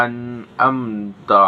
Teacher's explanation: dengan cara membacanya tidak dengung sama sekali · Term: izhar